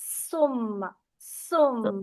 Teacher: आप अपने मुंह के आगे हाथ रखें और इस लफ्ज को पढ़ें, तो आप महसूस करेंगे कि आप पे आपके हाथ पर सांस या भाप जैसी आ रही है, उसको कहते हैं हम्स